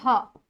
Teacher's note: स्वरयंत्रमुखी, जब हम ह का उच्चारण करते हैं तो हमारे मुख से जो वायु है वो पूर्ण रूप से स्वतंत्रता रूप से बाहर आ जाती है, इसीलिए हम इसको क्या कहते हैं, स्वरयंत्रमुखी व्यंजन।